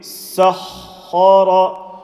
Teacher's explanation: Sin empty mouth, ha full mouth, ra full mouth. Say the shadda sound in the ha.